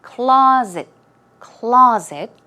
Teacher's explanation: stress goes on the first syllable and it's more of a z z z sound